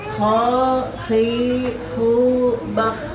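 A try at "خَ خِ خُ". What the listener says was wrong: Ada hamzah semua tuh. Kha, khi, khu.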